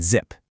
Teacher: Think about that hard stop for the p in pat, or that buzzing friction for the z in zip